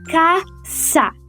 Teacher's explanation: no espanhol se pronuncia caça, como uma fricativa surda